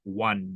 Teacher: when you pronounce words like one for example it's pronounced with a W in the beginning